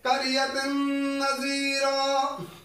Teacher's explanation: تنوین آئی ہے اور نون آ گیا تو ہم غننے کے ساتھ ادغام کریں گے